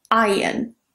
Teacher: Now in British English, it is pronounced differently to an American English, so that R is not pronounced in British English. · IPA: /aɪən/